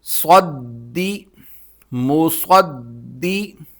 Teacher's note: صاد نکالنے کا طریقہ یہ ہے کہ دانتوں کو ملا کر سیٹی کے ساتھ یہ حرف نکالا جاتا ہے اور ساتھ ساتھ اس کو موٹا بھی کیا جاتا ہے